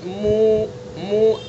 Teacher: تو منہ کے خالی حصے سے واو کو، واو مدہ کو ادا کریں گے